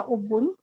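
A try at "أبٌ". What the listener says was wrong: अबुन, इसको पढ़ना सीखिए, अबुन। हम बा पे तशदीद लगा देते हैं ना, अबुन कह देते हैं, अबुन नहीं है, ये अबुन है।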